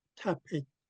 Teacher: So you're kicking the T, the P, and the last T. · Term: glottal stops